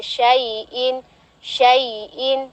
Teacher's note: Ada huruf ya sukun sebelumnya fathah, maka itu dihukumi ini ya harful lin tanpa dipanjangkan ya, langsung aja syai'in, syai'in.